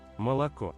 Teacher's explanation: Unstressed O pretty much becomes A. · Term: Vowel reduction